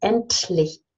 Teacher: It's not endlich, it's endlich. So you have no voice, but you actually swallow the T and you release.